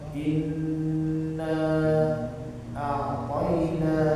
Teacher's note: inna itu tidak boleh ditekan, tidak boleh, tapi dia ditahan karena dia tasdidnya huruf nun, bukan huruf selain nun.